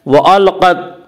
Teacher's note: قاف کو پر پڑھیں گے۔ قاف حروف مستعلیہ میں سے ہے۔ حروف مستعلیہ 7 ہیں جن کا مجموعہ خصہ ضغط قز ہے جو ہمیشہ ہر حال میں پر پڑے جاتے ہیں۔